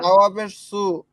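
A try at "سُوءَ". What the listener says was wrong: সাওয়াবে সু টানেন টান হবে না ওয়াও যে ভি কেন ওয়াও যে ভি এগুলো টানের নাম কি আপনি তো সুও টানতেছেন সমানে ওয়াও যে ভিও টানতেছেন ভাই এই সু টান নাই তো হাল সু ভি বাল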